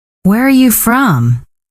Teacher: goes down at the end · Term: Falling tone